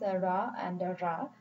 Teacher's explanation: the flaps where the tongue tip only Taps once on the point of articulation